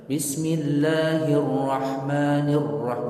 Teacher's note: Dia orang baca bismillahirrahmanirrahim, nggak sah, nggak ada tasydid pada ra, harus ditasydidkan bismillahirrahmanirrahim, begitu harus jelas nampak tasydidnya